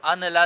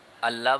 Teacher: ادغام ہو جائے گا، تام ہو جائے گا، نون مکمل طور پر ختم ہو جائے گا ، تو ان لا سے کیا بن جائے گا، اللہ بن